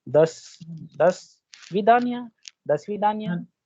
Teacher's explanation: जब ई पे स्ट्रेस है, ओ पे नहीं है, तो ओ की साउंड हो जाएगी आ जैसी